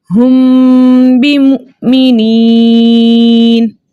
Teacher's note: میم ساکن ہے اور میم ساکن کے بعد با آ رہا ہے تو یہاں پر اخفاء شفوی کا قاعدہ ہوگا. ٹھیک ہے، ہم اخفاء شفوی کے ساتھ اس حرف کو ادا کریں گے.